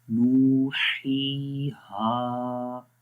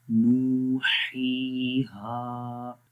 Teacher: تینوں جگہوں پہ ایک ایک الف کے برابر لمبا کریں گے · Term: حروف مدہ